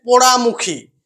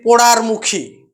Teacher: যেমন হচ্ছে পোড়ামুখী পোড়ামুখী থেকে আমরা অনেক সময় উচ্চারণ করি পোড়ারমুখী এই যে পোড়ামুখী থেকে পোড়ারমুখী এই যে র ধ্বনির আগমন ঘটলো উচ্চারণের সুবিধার্থে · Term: মধ্য ব্যঞ্জন ধ্বনি আগম